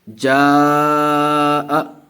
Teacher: تو یہ مد متصل ہے اس لیے کہ حرف مد کے بعد حمزہ یہ چھوٹی والی حمزہ ہے، اس لیے اسی کلمے میں ہے، تو اس کو مد متصل کریں گے اور اس کو 4 الف کھینچ کر پڑھیں گے۔ جاء، جیم الف مد زبر جا، حمزہ زبر ا، جاء۔